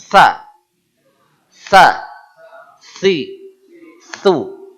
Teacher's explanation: huruf TS adalah huruf es yang lidahnya naik